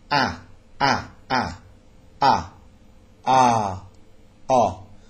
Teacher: these are all open vowels and they're called open because the jaw is lower and and the mouth is more open okay and these are the sounds the dentist would ask you